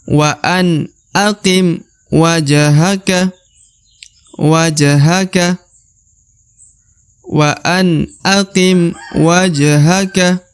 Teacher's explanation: huruf ja berharokat sukun. Maka dia harus dibaca pantul karena huruf ja masuk dalam huruf-huruf qalqalah atau huruf pantul ya.